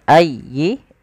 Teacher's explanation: Fabiayyi tekan yanya ayy ya jangan ayi tapi ayyi.